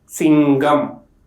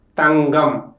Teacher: This letter is called a velar nasal. The back of the tongue raised against soft palate and the airflow is completely blocked and the airflow comes out through the nasal cavity.